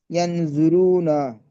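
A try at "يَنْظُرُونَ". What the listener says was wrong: গুন্নাটা একটু করেন, গুন্নাটা কম হচ্ছে।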